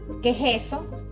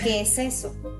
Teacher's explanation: estamos cambiando el sonido de la s por la jota